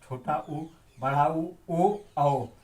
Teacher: जिन स्वरों के उच्चारण में ओष्ठ वृत्तमुखी या गोलाकार हो जाता है उन्हें वृत्तमुखी स्वर कहते हैं।